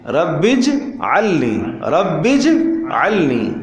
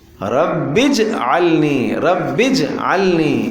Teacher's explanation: جیم کے اوپر زبر نہیں ہے، جیم پر جزم ہے اور قلقلہ ہے، قلقلہ